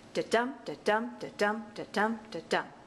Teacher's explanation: I ambach pentameter which means that the foot the I am unstressed stressed is repeated five times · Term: iambic pentameter